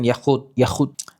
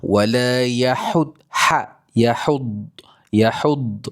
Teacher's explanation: kena jelaskan bunyi dengan huruf ha bukan kha bukan juga huruf ha di halkum ni bukan ha pedaskan.